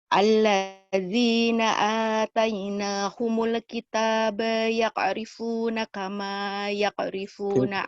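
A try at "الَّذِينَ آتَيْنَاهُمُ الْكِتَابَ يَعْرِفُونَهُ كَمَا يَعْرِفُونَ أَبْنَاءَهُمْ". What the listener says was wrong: Ya'rifunahu, tadi hanya nggak dibaca.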